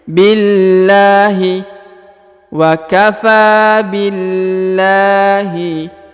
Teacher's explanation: dan juga ada Alif di depannya ini kasrah huruf i atau harakat I sebelum lafzul jalalah ya maka dibaca tipis